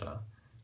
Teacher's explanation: This is usually going to be an alveolar tap.